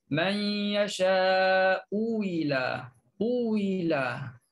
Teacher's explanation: Bila satu baris depan, satu lagi depannya baris bawah, boleh dua wajah. Yang pertama ialah tukarkan hamzah, ibdalkan hamzah kepada waw.